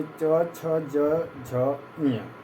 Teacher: च वर्ग जिसे च, छ, ज, झ, ञ, ये केवल स्पर्श व्यंजन नहीं है, ये स्पर्श संघर्षी व्यंजन में इसकी गणना की जाती है